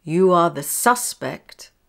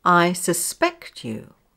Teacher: Number two, words which can be used as both nouns and verbs. The noun has stress on the first syllable